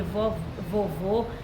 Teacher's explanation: Porque é porque vovô, ele tem duas sílabas, então ele não pode ser monossílaba. Ele é oxítona, porque a intensidade dele maior está sendo na última e ele tem acento porque ele é terminado em O.